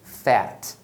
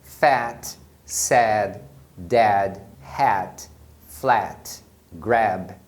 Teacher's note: Então, toda vez que a palavra termina em alguma consoante, o A vai ter a pronúncia curta, que é esse som do E, bem aberto. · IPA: /æ/